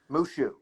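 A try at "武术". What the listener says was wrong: Yes, almost, but with a W in front of instead of an M.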